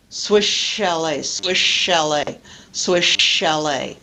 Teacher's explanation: the s disappears and I pronounce the sh sound in an elongated fashion